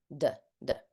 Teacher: And D is voiced and non-plosive, right?